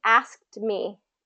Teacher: you're going to have a little bit of a release on the T